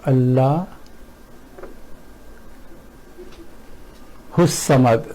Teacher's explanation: What happens here is that from the last letter of this lafaz jalala we have gone straight to swad, which is in this case, because it's a sun letter, so we have not even pronounced lam here, and we have totally ignored alif, this, which is actually hamza.